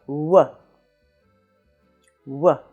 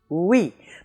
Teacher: the semi vowel starts from the vowel position of ou but it quickly transitions into another vowel, as in oui